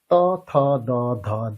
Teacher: ত বর্গীয় বর্ণগুলো উচ্চারণ করার সময় আমাদের ব্যবহার করতে হয় দাঁত। অর্থাৎ দন্ত। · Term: দন্ত বর্ণ